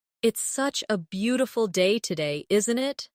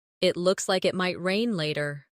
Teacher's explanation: Notice how the intonation rises at the end, making it sound like a friendly remark.